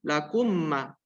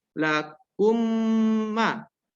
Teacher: Yang pertama satu harakat, yang kedua dua harakat. Dan tidak boleh lebih. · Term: gunnah